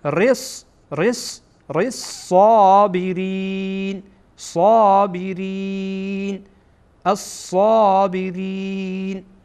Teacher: صاد هم از حروف شمسیه هست، یعنی این لام خوانده نمیشه.